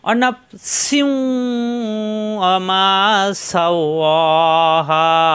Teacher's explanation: সা শক্ত আওয়াজ হবে গভীর হরফ জিব্বা নিচে চাপ দিয়ে বাতাস বের হবে